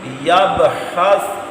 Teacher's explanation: با پر قلقلہ آپ نے کرنا ہے کیونکہ با حروف قلقلہ ساکن ہے